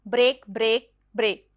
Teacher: has stressed and stressed syllable together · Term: spondic